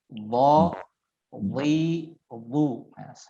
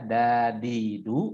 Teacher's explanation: pangkal lidahnya atau lidah bagian belakangnya ikut diangkat ya sebagai konsekuensi daripada huruf isti'la, yakni huruf yang harus dibaca dengan tebal ya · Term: huruf dhad